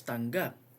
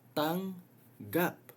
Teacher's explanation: Think of it as syllables. You have the ang, tang here, which is the velar nasal, and then you add another G for the plosive.